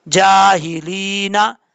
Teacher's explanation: यहाँ पर या मद्दा है, एक अलिफ की मिकदार लंबा करेंगे